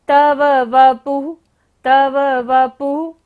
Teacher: विसर्ग है, तो यहाँ पर सारी सांस का विसर्जन करना है और हम दोबारा से सांस लेंगे, फिर हमें नेक्स्ट वर्ड पढ़ना है।